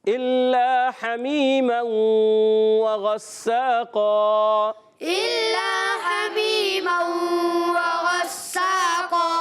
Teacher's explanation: قاف کی ادائیگی قاف موٹے حروف میں سے حروف مستعلیہ میں سے موٹا کریں گے، اور دو زبر کی تنوین کو وقف کی صورت میں الف سے بدل دیں گے. · غساقا میں سین سیٹی والا ہے، سیٹی کے ساتھ ادا کریں گے، باریک رکھیں گے، مشدد ذرا رک کر بھی ادا کرنا ہے.